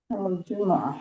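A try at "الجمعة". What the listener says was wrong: al-jumu'ah tidak ada yang panjang, tekan di jimnya. Al-jumu'ah gitu.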